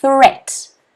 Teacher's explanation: It's an unvoiced th sound.